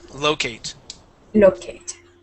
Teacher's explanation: the accent goes at the very beginning